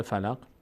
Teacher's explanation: یعنی قاف از مخرجش در مخرجش میلرزه مقداری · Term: قلقله